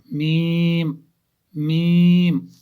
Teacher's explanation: दोनों होंठों की खुश्की का हिस्सा, जो हमारे होंठ है खुश्क वाले हिस्से जो बाहर है, वही जब आपस में मिलते हैं तो वहां से मीम निकलता है।